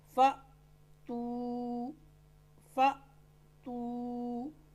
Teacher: روایت حفظ میں حمزہ ساکنہ کو ہمیشہ جھٹکا دے کر پڑھیں گے۔ دیکھیں الف کے اوپر یہ جزم کی علامت ہے تو الف یہ کیا بن گیا، حمزہ بنا ہوا ہے یہاں پر۔